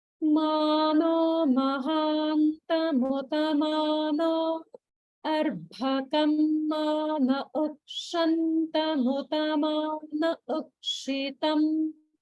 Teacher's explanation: notice the gap after no and before arbhakam